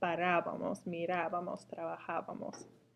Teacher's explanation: Notice the accent on the nosotros form, and don't forget that it's the syllable that comes before the B. That's where you put the emphasis.